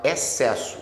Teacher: Porque olha só, esse XC é dígrafo. Você fala excesso, o X não sai.